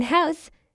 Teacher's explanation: In house, the H is strongly aspirated.